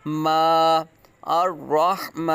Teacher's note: میم کے آواز ناک میں نہیں جانی چاہیے